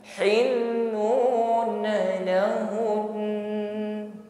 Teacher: Lahun, dengungnya ditampakkan di sini karena nun tasydid ini guna akmal ya, gunanya paling sempurna. Bukan hanya sekedar lahun, bukan ya, namun dengungnya ditampakkan.